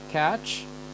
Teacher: so we have a stop sound with a fricative